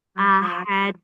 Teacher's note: terutama pada ha di akhir itu dibaca tipis enggak tebal. Ahad e dan tidak panjang.